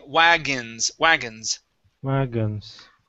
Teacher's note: the O-N is actually pronounced like a short I and an N